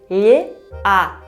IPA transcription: λ